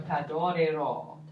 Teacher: Yeah, so the stress is on ro